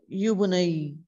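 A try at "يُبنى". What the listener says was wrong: Yubana. No, there's no ya in Muzari, okay? Yubana. So note these three verbs in muzare majhul. You write alif maksura at the end, okay? Alif maksura at the end.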